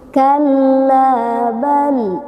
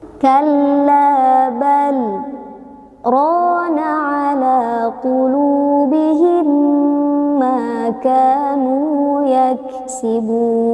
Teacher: dimaksudkan agar kita betul-betul memastikan tidak bernafas pada saat berhenti sehingga ujung lidah tetap terangkat ke atas karena huruf terakhir yang terbaca adalah huruf lam jangan diturunkan ke bawah apalagi sampai menutup mulut kita khawatirnya kita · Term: saktah